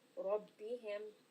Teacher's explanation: again the Ra is heavy. Why? Because it has a fatha.